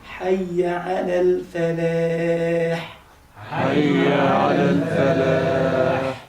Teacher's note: الفاء مرققة واللام برضه مرققة